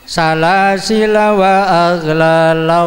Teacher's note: walaupun tulisannya panjang, lamnya panjang, tapi jika wasol harus dibaca pendek